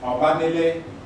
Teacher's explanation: De, arise, and then ile. So when it comes together, you have elision, which occurs between the Oba, the de, and then the ile, so the e is dropped off.